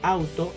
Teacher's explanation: en la palabra auto el diptongo está en la sílaba out formado por la vocal abierta y la vocal cerrada